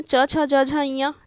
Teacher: ठीक, अब देखते हैं नेक्स्ट, च व्यंजन का उच्चारण होता है च, तो च वर्ग तालु से होता है, च छ ज झ ञ। ठीक है, तालु से होता है क्योंकि हमारा जो जीभ है वो तालु को टच करता है